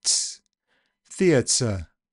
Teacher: process starts as affrication, so the t gets a little s after it, ts, theatre.